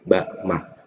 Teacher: Sama-sama di asyafatan, tepat di bibir.